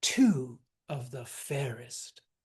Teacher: It's stressed, soft, soft, stressed.